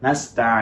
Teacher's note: ফেলছি এটা আমাদের ভুল হয়ে যাচ্ছে তো আমাদেরকে যেটা করতে হবে খুব বেশি গুন্না এবং খুব কম গুণার মাঝামাঝি একটা স্থান তৈরি করতে হবে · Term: মাঝামাঝি গুণ